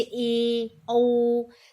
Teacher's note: कुछ ऐसे वर्ड होते हैं जैसे बड़ी ई ऊ, तो इस तरह के। या अर्ध संवृत स्वर यानी कि थोड़ा ज्यादा खुला